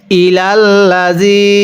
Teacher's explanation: জের পরে ইয়া সাকিন এক আলিফ টানতে হয়।